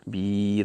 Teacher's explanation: This is mad arid للسكون. You read it with a 4 harakat.